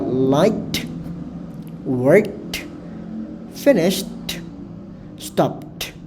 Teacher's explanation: Artinya ke, sh, p itu merupakan bagian dari voiceless, dan dipastikan kalau kalian menemukan ada voiceless consonant sounds di akhir kata tersebut sebelum ed, maka ed-nya dipastikan dibaca menggunakan t atau dibunyikan menggunakan t